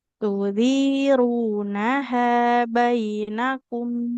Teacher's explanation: illa an takuna tijaratan hadiratan tudirunaha bainakum. Tudiru, ro-nya dhamma. Di depannya ada wawu, maka harus dibaca panjang.